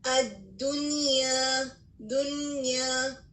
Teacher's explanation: یہاں پہ ہم مرج نہیں کر رہے، بلکہ اس کے برخلاف ہم یا کو واضح کر کے پڑھ رہے ہیں